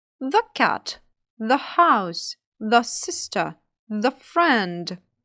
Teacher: Перший варіант The знову зі звуком шва перед словами які починають з приголосних звуків